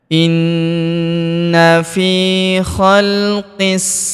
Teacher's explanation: huruf fi kita panjangkan dua harakat karena terdapat ya sukun di depannya